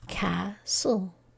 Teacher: an l e so we're going to read Cass we won't read the T and then we won't read the e these are just silent